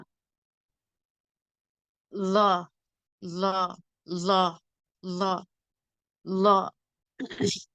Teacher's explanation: நாவின் நுனி மேல் நடுப்பற்களின் ஈரில் இணையும் போது உண்டாகும்.